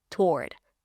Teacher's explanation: we don't pronounce the W here.